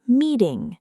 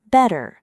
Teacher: Instead of a hard T, the tongue quickly taps behind the teeth. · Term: flap T